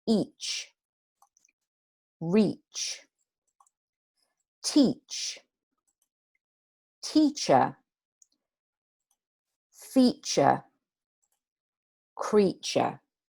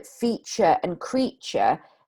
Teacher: here in the feature and creature, it is a slightly different sound, but it's much closer to a ch sound than a t sound, which is what a T usually says in English, as you know.